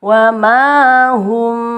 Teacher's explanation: mim sukun bertemu ba dibaca ikhfa